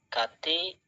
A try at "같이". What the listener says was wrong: Jadi itu dibacanya bukan gati tapi gaci kan? Harusnya. Gaci. gaci. Jadi ada aturan. Nanti ada aturannya 2. Ketika ada bacim, tulisannya kekecilan ya Allah.